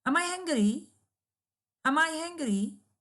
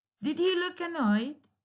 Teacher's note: A positive yes, no question, also with a falling tone